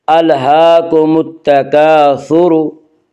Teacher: अलहाकुमुत तकासुर, अलिफ मद्दा, अलिफ हमेशा मद्दा होता है, अलिफ से पहले हमेशा ज़बर होता है। अलिफ मद्दा को एक अलिफ के बराबर खींच कर पढ़ेंगे